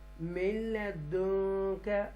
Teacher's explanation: نون ساکنہ کے بعد لام آ رہا ہے اس لیے ہم اس کو لام کو کلیئر پڑھیں گے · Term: اظہار